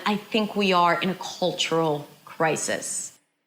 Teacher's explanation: So the words are prolonged, but also the pace slows down towards the end.